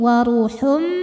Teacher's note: Waruhum, kemudian ada hukum idgham bi gunnah karena ada tanwin dhammah menghadapi huruf mim, maka tanwin masuk ke mim, waruhum, dan dengungkan.